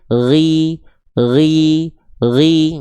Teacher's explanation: ketika huruf gin dia berharakat baris bawah, maka huruf ginnya dia ketebalannya berkurang